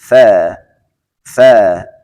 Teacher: و همچنین حرف تا سر زبان و پشت دندان ها میزنیم میگیم تا، و حرف ثا سر زبان به سر دندان ها میزنیم میگیم ثا